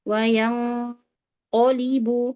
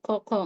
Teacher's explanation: Huruf qafnya dikuatkan. Jangan sampai bocor nafas. Lidahnya agak ke belakang ya.